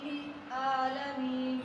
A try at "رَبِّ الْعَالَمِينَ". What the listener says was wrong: لام کو آپ نے باؤنس نہیں ہونے دینا جو کہ حروف قلقلہ میں سے نہیں. رب العالمین. وہ با جیم دال قاف قا ہیں جو ان پہ قلقلہ ہوتا ہے. آبد احد, لیکن لام پہ قلقلہ نہیں. رب نہیں. رب العالمین. اس سے بچنے کا طریقہ یہ ہے کہ آپ زبان کی نوک کو آپ لام کے مخرج پہ لگاتے ہیں تو جھٹ سے نہ کھینچیے. رب جھٹ سے کھینچیں گے تو رب لام باؤنس ہوتی ہے.